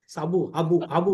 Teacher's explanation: राजस्थान के बाड़मेर साइड में भी स को ह बोलते हैं, साबुन को हाबुन बोलते हैं, साबु हाबू हाबू बोले।